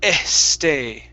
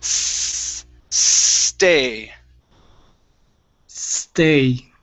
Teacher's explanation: let's take off the e sound